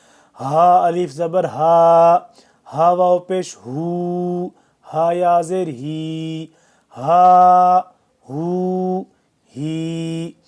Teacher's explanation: ہا کو ہم نے ہوا کی طرح نکالنا ہے، سینے سے نکالنا ہے، ہا نہیں نکالنا، یہ ہا والا اوپر ہے حلق سے، جو ہم نے پیچھے پڑھا ہے حلق سے وہ نکالنا ہے، یہ والا ہم نے ہوا کی طرح نکالنا ہے، منہ سے، خالی منہ سے نکالنا ہے، ٹھیک ہے، یا سینے سے نکالنا ہے۔